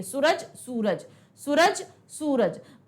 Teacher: ऊ की मात्रा को हम लंबा खींच रहे हैं, बड़े ऊ की मात्रा को।